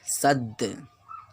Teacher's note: ہوگا اس میں، کیونکہ یہ قاف طا با جیم دال میں سے ہے، یہ قطب جدین میں سے ہے، حروف قلقلہ ہے، حروف قلقلہ ہے تو اس میں قلقلہ ہوگا، یعنی ان کے مخرج ٹکر کھا کر الگ ہو جائیں گے